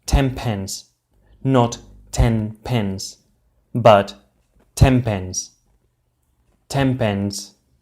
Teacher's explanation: the p sound in pens which is pronounced by getting our lips together influences the way we say the sound of ten and this becomes an um also pronounced by getting our lips